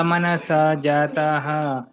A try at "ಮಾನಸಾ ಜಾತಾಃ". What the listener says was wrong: ನಿಮ್ದು ಮ ದೀರ್ಘ ಬರಲಿಲ್ಲ ಪ್ರಜಿ ಮಾನಸ ಅದು ಮನಸ ಅಲ್ಲ ಮಾನಸ